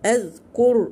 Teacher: الراء هنا ساكنة قبلها مضموم يبقى مفخمة